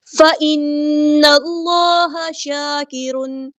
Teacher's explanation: اللہ کا جو لام ہے پر ہیوی ادا ہوگا، موٹا پڑھیں گے · رکنا ہے، فَإِن، یہ غنہ زمانی ہو گیا، میں رک گئی، اب نون کو لام کے ساتھ ملائیں گے، حمزۃ الوصل ہمارا ڈراپ ہو جائے گا ، اللہ کا جو لام ہے پر ہیوی ادا ہوگا، موٹا